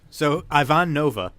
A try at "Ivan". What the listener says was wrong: Why are you saying Ivan? It's Ivan. It's not like EYEI. It's eh.